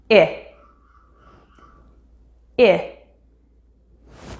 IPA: ɪ